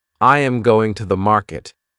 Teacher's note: For example, in the sentence, I am going to the market. The strong words are going and market. The small words are softer. This pattern creates rhythm.